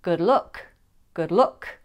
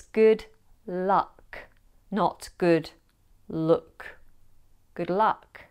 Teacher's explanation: the vowel sound in put and good sound different to the vowel sound in cut and strut.